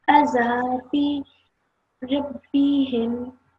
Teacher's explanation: we're prolonging for 2 seconds because of the alif acting as a letter of prolongation